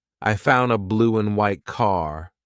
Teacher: Here, the word and is being reduced. Just cut off that final D sound.